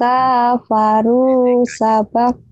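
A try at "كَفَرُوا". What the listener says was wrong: Kapnya pendek.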